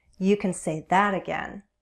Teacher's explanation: And note how I place emphasis on that.